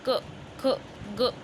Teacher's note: कंठ स्वर जिसको बोलने में हमारे गले का यूज हो रहा है